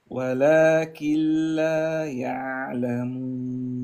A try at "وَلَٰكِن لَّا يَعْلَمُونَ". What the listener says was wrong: لا احنا الان لازم نجيب اللام المشدده انت اكلت ولكن كسره الكاف